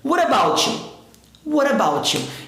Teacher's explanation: T entre vogais, ó. E esse T seguido do U vai ter o som do CH